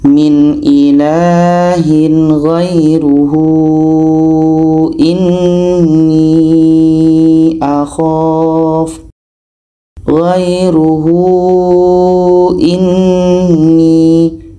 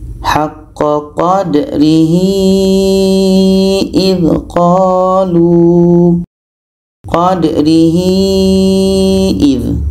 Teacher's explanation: Ada hadhamir panjang waw kecil bertemu dengan hamzah. Ini mad silah tawilah, panjang 4 sehingga 5 harokat.